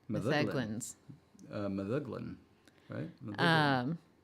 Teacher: Stress on second to last syllable.